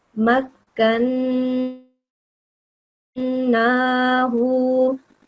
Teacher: So the noon has a vertical fatha and it has noon mushaddad, okay? The noon has a shadda on top. So you'll be prolonging it in your mouth for 2 seconds because of the shadda. And then once you open your mouth, you'll be prolonging the vertical fatha for another 2 seconds, okay?